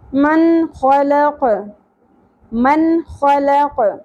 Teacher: یہاں پر نون ساکن کی اواز کو ظاہر کرتے ہوئے پڑھیں گے کیونکہ اگے حروف حلقی میں سے خا ا گیا حروف حلقی